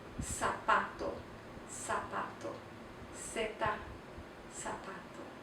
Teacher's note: It is pronounced like the S sound. It always makes the S sound. There is no Z sound in Spanish.